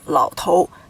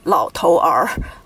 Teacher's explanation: And this only happens in the putonghua system on the Chinese mainland. In Taiwan guoyu, they do not have the ar hua yin, so they will just read it as lao tou.